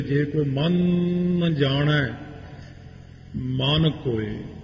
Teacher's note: ਪਹਿਲੇ ਮਨ ਨੂੰ ਮੈਂ ਤਾਂ ਜ਼ੋਰ ਨਾਲ ਬੋਲਿਆ, ਪਹਿਲੇ ਮਨ ਤੇ ਟਿੱਪੀ ਲੱਗੀ ਹੋਈ ਹੈ, ਫਿਰ ਅੱਗੇ ਮਨ।